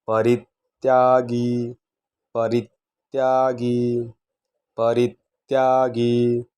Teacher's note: जोडाक्षराच्या अगोदरचा शब्द री यावरती जोर द्यायचा आहे त्याला थोडं दाबायचा आहे परित्यागी परित्यागी परित्यागी असा त्याचा उच्चार आला पाहिजे शुभाशुभ परित्यागी शुभाशुभ